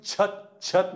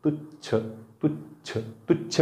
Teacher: छत म्हणताना जिभेच्या कडा उच्चारा छत छत पण तुच्छ म्हणा तुच्छ तुच्छ तुच्छ म्हणताना जिभेचा शेंडा समोर येतो